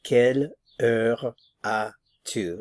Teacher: Notice that we're not pronouncing the S here, so quelle heure as-tu?